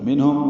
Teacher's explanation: منہم نون ساکن پہ اظہار ہے، اظہار حلقی